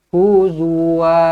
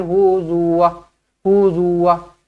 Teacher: satu harakat je Wah huzuuz ramai yang baca macam tu Ok dia tak boleh satu harakat Dia kena dua harakat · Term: Mad